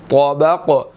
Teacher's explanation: طا موٹا ادا ہوگا اور قاف یہاں پر سائلنٹ ہو رہا ہے, یہاں پر اس پر قلقلہ ہوگا